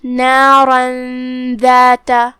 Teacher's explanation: ہم یہ تنوین کو بغیر ظاہر کیے ہوئے لیکن غنہ کے ساتھ یہ حکم کو ادا کریں گے · کلمت نارن کے آخری میں را پہ تنوین زبر ہے، لہذا ہم را کو تفخیم سے ادا کریں گے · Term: اخفاء